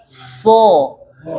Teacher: kalau shod ini dia pangkalnya naik namun ujungnya turun